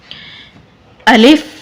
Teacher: अलिफ मुंह के खाली हिस्से से अदा होता है